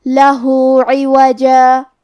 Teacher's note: کلمت لہو میں ہا پہ الٹا پیش ہے، یہاں حکم ہے مد صلہ صغرا، ہمیں اپنی آواز 2 مد کے برابر لمبی کرنا ہے